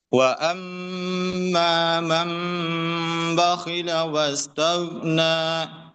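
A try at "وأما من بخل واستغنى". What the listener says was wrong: Goinnya masih ketarik ke belakang. Sama satu lagi di sini. Nah, di iklapnya jangan terlalu kuat ya. Ringan saja. Cukup ditempelkan dengan ringan. Cukup nyentuh saja.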